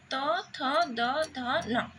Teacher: तो को वर्ण उच्चारण कला बेले जीवा दंत को स्पर्श करुची ना त थ द ध न ए 5 टी वर्ण आमे उच्चारण कला बेले जीवा र अग्रभाग दंत को स्पर्श करुची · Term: दंत्य वर्ण